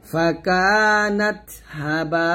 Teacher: এই বাতে 4 টান দিবেন